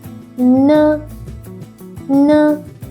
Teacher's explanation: When you [music] say N, you can feel your nose vibrating.